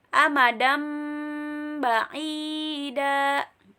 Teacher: Contohnya ada tanwin bertemu dengan ba atau nun sukun ketemu ba, maka dibaca jadi mim. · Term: iklab